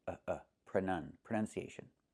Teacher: the noun is pronunciation with a short uh sound.